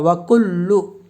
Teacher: وَكُلْ، لام کے اوپر پیش ہے، پیش کو جلدی پڑھا، تھوڑا بھی نہ کھینچیں، معروف پڑھیں اور مجہول آواز سے بچیں۔ پیش کی آواز آگے کو جاتی ہے، ہونٹوں کے کنارے ملتے ہیں اور بیچ کا حصہ کھلا رہتا ہے۔